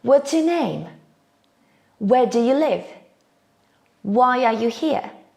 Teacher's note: My voice drops at the end of the question. So when we ask WH question, intonation falls.